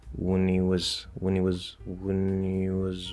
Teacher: i dropped the h and he it's a normal linking rule